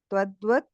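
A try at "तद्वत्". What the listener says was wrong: I think you're saying twadduvad. It's tadduvad.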